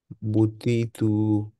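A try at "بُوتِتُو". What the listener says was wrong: টুটা একটু বড় হয়ে গেছে টি এর চেয়ে। বুতি টু।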